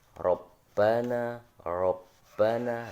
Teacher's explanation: Ro dibaca tafkhim atau dibaca tebal.